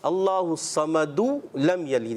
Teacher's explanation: یعنی دال کی پیش پڑھ کر پھر ہم آگے جائیں گے